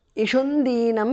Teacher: because of sandhi anuswara changes to nu there